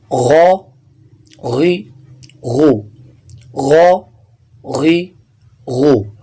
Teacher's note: صرف خا اور غین یہ حروف مستعلیہ میں سے ہیں، موٹے پڑے جائیں گے۔